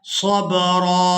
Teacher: वक़फ़ की सूरत में रा को एक अलिफ मिकदार खींचकर अदा करेंगे और रा पर हमने एक ज़बर अदा करनी है।